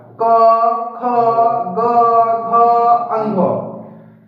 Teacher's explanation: पांचो लेटर साथी कांठ या गला से बोला जाता है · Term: को वर्ग